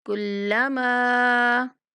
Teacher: یہاں میم کو 3 سیکنڈ تک لمبا کر کے پڑھنا ہے